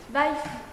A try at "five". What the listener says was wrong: Non, parce que je dis F, c'est five.